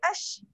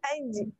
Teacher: Yang tu salah sebab dia macam bunyi shin. Jadi jim dengan shin, tempat keluar huruf dia sama, cuma shin dia bunyi shin dia bila mati dia lain bunyi dia ash. Kalau jim mati dia aj.